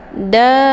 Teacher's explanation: sempurnakan panjangnya dulu, ya, 6 harokat, kemudian diiringi dengan menyempurnakan tasydid. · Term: mad lazim musaqqal kilmi